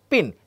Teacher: when you pronounce pin, you will look at, or you will see that the phoneme P comes out with a puff of air. Take your hand, place it in front of your mouth and try saying pin.